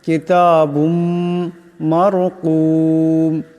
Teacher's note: কিতাবুম কাবজের কি, তা খারাজাবার তা, কিতা বা মিম দুই পেশ বুম, কিতাবুম। এখানে বার উপর দুই পেশের তনবিন, এরপর মিম আসছে, ইদগাম হয়ে যাবে, ইদগামের একালি পরিমাণ গুন্না হবে।